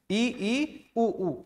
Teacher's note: संवृत स्वर कह सकते हैं जिनके उच्चारण में मुख बहुत कम खुलता है। इ उ और उ ये चार वर्ण इ उ ऊ इसको बहुत कम मुख खोल के हम बोल सकते हैं।